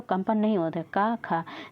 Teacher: क फिर आता है ख फिर ग घ ण तो देखिए क और ख को बोलते हैं तो कंपन नहीं हो क ख लेकिन हम क्या बोलेंगे ग तो कंपन होएगा घ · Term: अघोष